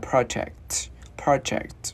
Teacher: Chữ K thì mình khựng cổ lại. Và chữ T thì mình bật ra project, project.